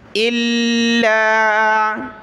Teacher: इन, बिशैइन इल्ला, حمزہ لام زیر لام الف زبر لا، الا لام کے اوپر تشدید ہے تو اس کو ہم نے جمع کر سختی کے ساتھ پڑھنا ہے